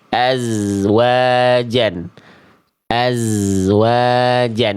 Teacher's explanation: Tapi suaranya bukan dipantulkan. Suara huruf zai itu dirakhawahkan, dialirkan.